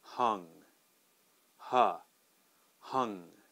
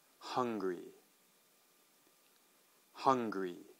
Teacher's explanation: the U is going to be a flat u sound so that's going to be a uh sound